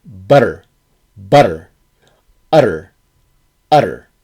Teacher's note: your tongue flaps up against the roof of your mouth and then comes back down immediately. It's called a flap in linguistics.